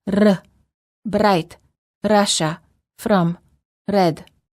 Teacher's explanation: rolling R, where the tip of the tongue touches the gum ridge, similar to the D sound, but with a quick and repeated motion.